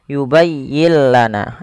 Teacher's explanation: Maka apabila ada ada nun mati bertemu lam, suara nunnya kita hilangkan dan kita masukkan langsung kepada huruf lamnya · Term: idgham bila gunnah